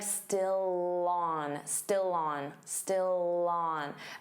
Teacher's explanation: Notice how still and on link together and you'll hear that L sound on on.